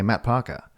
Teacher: when people say Matt Parker they say m and then a hard stop and then Parker